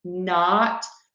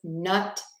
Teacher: open your mouth in a wide oval versus nut, which has a more closed and relaxed mouth